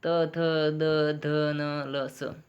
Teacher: उच्चारण स्थान क्या है इसका? दांत और नाम ध्वनि दंत्य।